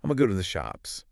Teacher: You don't have to fully round your lips for the oo sound into. · The reduction of going to gonna eliminates that second G sound and the full vowel into, leaving us with that flowing schwa at the end.